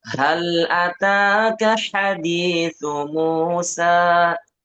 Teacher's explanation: hal itu pakai ha yang keluar dari tenggorokan bawah